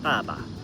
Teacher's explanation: the second syllable is neutral and it maintains the pre the end of the previous tone. It's not a strong tone, but it's kind of light and short. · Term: neutral tone